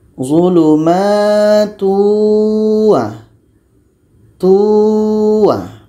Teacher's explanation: Jadi cara bacanya tanwin ini kita masukkan kepada wa. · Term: idgham bi gunnah